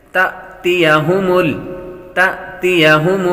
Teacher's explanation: الف پر جب جزم آ جائے تو وہ حمزہ ہوتا ہے اور حمزہ ساکنہ کو جھٹکا دے کر پڑھتے ہیں۔